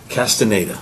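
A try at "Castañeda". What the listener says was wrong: It's an Enya, the little school.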